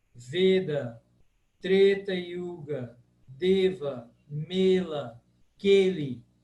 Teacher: Tudo fechado, sempre fechado. O E, em sânscrito clássico, ele é sempre fechado. Regra absoluta, não tem erro.